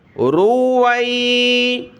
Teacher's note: را کے اوپر پیش ہے، اس کو موٹا پڑھا اور واو کو یا کے ساتھ ملایا۔